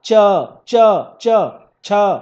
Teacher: देखिए आपका जीव तालू से टच कर रहा होगा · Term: च वर्ग